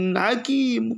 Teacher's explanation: Apabila ada nun sukun bertemu dengan huruf ha, maka cara bacanya jelas.